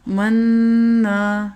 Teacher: نون کے اوپر شد کا سائن ہے تو غنہ فرض ہوگا، اور نون کے ساتھ الف ملا کے لکھا ہے تو 1 سیکنڈ کے لیے نون کو لمبا بھی کریں گے۔